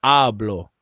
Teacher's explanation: in Spanish, it's the penultimate syllable that has the inflection, that has the emphasis on it.